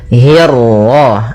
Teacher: Bismillahirrahrah Kemudian hi-nya tipis, kasrah bertemu ra yang tebal. Nah, di sini kita namakan dengan ra tafkhim